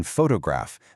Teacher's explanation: In a strong syllable, like the fo in photograph, that vowel is super clear and pronounced.